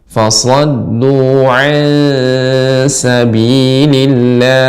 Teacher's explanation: sifat sifatnya tipis, ikhfa, ya, bertemu dengan huruf yang tipis maka dibaca ansa